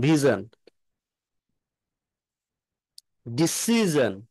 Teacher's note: ডিসি, এই সির উপরে স্ট্রেজ হবে